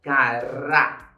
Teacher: Quando eu falo a palavra caráter, a minha sílaba forte, que eu pronuncio com maior intensidade, é o Rá.